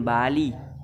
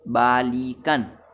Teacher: Perhatikan seperti contoh berikut, yaitu pada kata balik diucapkan bali, vokal I diucapkan I rendah, tetapi ketika mendapatkan sufiks an sehingga menjadi baikan, bunyi I berubah menjadi I tinggi, balikan. Perubahan ini akibat bunyi yang mengikutinya.